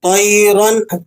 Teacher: تنوین پر یہاں آپ غنہ ادا نہیں کریں گے کیونکہ نون ساکن اور تنوین کے بعد اگر حروف حلقی آ جائے تو وہاں آپ غنہ ادا نہیں کرتے.